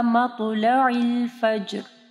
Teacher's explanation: عین کو واضح پڑھنا ہے اور جیم کے اوپر کلکلہ کرنا ہے